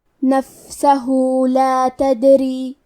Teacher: آخری میں ہا پہ الٹا پیش ہے، یہاں حکم ہے مد صلہ صغرا، مطلب ہم اپنی آواز 2 مد کے برابر لمبی کریں گے